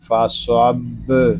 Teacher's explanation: صاد یہ حروف مستعلیہ میں سے ہے، اس کو پر پڑھیں گے، آگے با مشدد ہے، اس کو جماؤں کے ساتھ ادا کریں گے۔